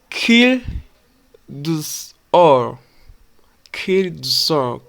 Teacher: it becomes soft flap almost like a quick d or t then us starts with a vowel so we link it like